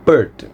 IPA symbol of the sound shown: ɜː